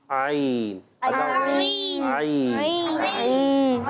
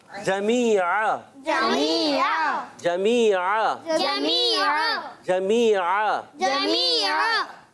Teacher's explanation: तो मैंने कहा आइन हलक से अदा होता है